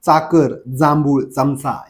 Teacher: चाकर जांभूळ चमचा यांचा उच्चार करताना दाताला स्पर्श होते तालुला तर होणारच आहे का तर तालव्य वर्ण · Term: दंत तालव्य, दंत तालव्य उच्चार